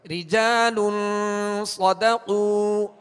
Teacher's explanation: لام پر دو پیش کی تنوین ہے اور آگے صاد حروف اخفا میں سے ہے, لہذا یہاں پر غنہ کر کے پڑھیں گے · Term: اخفا کا قاعدہ